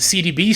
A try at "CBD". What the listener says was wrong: CBD. No, CBD. CBD. You said CDB. CBD.